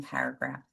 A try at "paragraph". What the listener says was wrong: You have the emphasis on the wrong syllable, but I like that. The paragraph. That's another way of pronouncing paragraph. Is the paragraph.